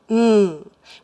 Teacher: to produce the sound M we close our lips turn our voices on and push air through our nose